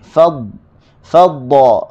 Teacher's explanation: Okey, kalimah faddala. Huruf dad, hujung lidah berada di gusi.